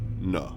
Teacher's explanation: By creating a complete obstruction of airflow with the tip of your tongue to your alveolar ridge while breathing through your nose, then switching the breath upon release of the closure, you produce N. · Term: voiced alveolar nasal